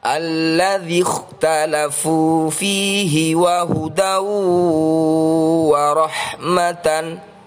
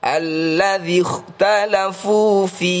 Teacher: Jika dibaca wakof atau berhenti, maka ini adalah bacaan mad arid li sukun, yaitu matabi'i bertemu huruf hidup dibaca wakof. Namun jika dibaca wasol, maka fi ini adalah bacaan matabi'i, dibaca panjang 2 harokat. Jika dibaca waqaf atau berhenti, dibaca panjang 5-6 harokat.